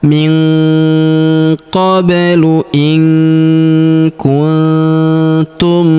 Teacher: min qoblu in kuntum nun sukun perhatikan bertemu huruf tu lagi. Maka nun sukunnya melebur ke huruf tu. Kita baca dengung dan samar dengungnya kita tahan dua sampai 3 harakat.